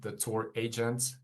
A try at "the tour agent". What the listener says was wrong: And again, the stress isn't there, right? It should be the tour agent. It's not the tour agent, it's the tour agent. So in those compound nouns, candidate often puts the stress in the wrong place with sentence stress.